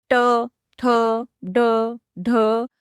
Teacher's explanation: इन्हें बोलते समय जीभ का जो आगे का हिस्सा होता है यानी जीभ की जो नोक होती है वह ऊपर की ओर मुड़कर तालु के सबसे ऊंचे पार्ट को यानी मूर्धा पर जोर से टच करती है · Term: मूर्धन्य वर्ण